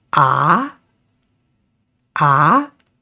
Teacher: the second tone is a uphill tone when you make this sound you got to start low and go high so it is a A and S tone is down and